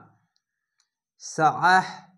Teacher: আইনটিকে মোটা করে গলা চেপে পড়বেন